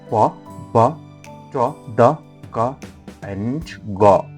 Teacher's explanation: The manners listed above include plosive. The airflow is completely stopped and then suddenly released, as for example pa, ba, ta, da, ka and ga.